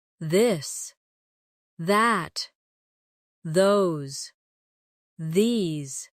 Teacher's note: your tongue touch your teeth lightly, but use your voice